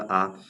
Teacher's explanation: जिन स्वरों के उच्चारण में मुख पूरा खुलता है, जैसे आप आ बोलिए तो आपका पूरा मुख खुलेगा आ। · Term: विवृत